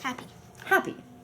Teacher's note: when we say the word the sound of the first P kind of disappears